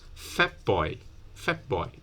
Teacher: It's not really a full p, yeah, not fat boy, but you close your lips at the end of fat. So instead of doing t, you close your lips, but you don't do the burst. You don't explode this plosive.